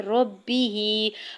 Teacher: ربہ، را کی زبر کو با مشدد کے ساتھ ملاتے ہوئے پڑھنا ہے، با کی زیر کو بغیر کھینچے ہوئے ادا کرنا ہے۔ ہا کے نیچے کھڑی زیر ہے اور اوپر مد منفصل ہے، 4 سے 5 حرکت کھینچ کے ادا کریں گے۔